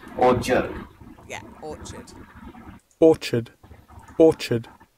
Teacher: An orchard, so it's a ch sound, not a k sound. Orchard. Try it.